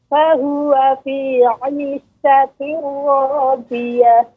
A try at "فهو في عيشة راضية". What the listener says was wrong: Untuk catatannya Bu ya, untuk huruf dot ya, ini pengucapannya tidak dengan ujung lidah. Kalau ujung lidah maka suaranya akan lebih bulat. Nah, ini kurang tepat, tapi menggunakan tepi lidah bagian samping kanan kiri yang bagian belakang ya, bertemu dengan gigi geraham.